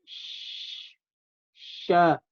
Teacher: bagian tengah lidah bertemu dengan langit-langit mulut atas dan ditekan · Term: shin